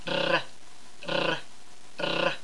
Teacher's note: you're allowing that air to cause your tongue tip to vibrate r r r so start with a tap and add the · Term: trill R